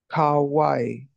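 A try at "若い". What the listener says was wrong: Close. It's wa kai. So you got the ka and the wa in the wrong place. Sounds like kawaii so pitiful. But it's wakai, young. Wakai.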